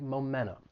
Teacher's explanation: if you're in the United States you may hear somebody drop that t and it's going to sound like momentum so I figure we